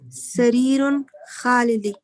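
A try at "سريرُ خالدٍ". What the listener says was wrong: No, not sarirun, sariro.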